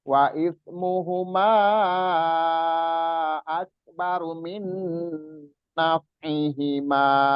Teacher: Ini nih, wa ismuhuma, kalau kita berhenti di situ, jadi nggak berlaku hukum mat jaiz mufasilnya yang panjang, yang 4 sampai 5 harokatnya nggak berlaku. Berlakunya hukum mat jaiz mufasil setelah mat tobi'i, ma ini bertemu dengan hamzah yang di depannya. Baru dia boleh panjang 4-5 harokat.